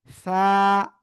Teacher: জিহ্বার আগা উপরে দুই দাঁতের আগায় লাগাবেন সবাই, লাগিয়ে আমরা এই অক্ষরটা উচ্চারণ করব সা। হালকা বাতাস বের করতে হবে, বাতাস না বের হলে কিন্তু কাজ হবে না।